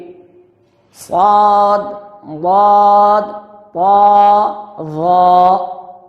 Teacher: এই 4টা হরফের উচ্চারণের সময় জিহ্বার তালু উপরে তালুর দিকে চাপা হয়ে যাবে। বাকি 24টি হরফ জিহ্বা উপরের দিকে উঠবে না। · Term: ইতবাক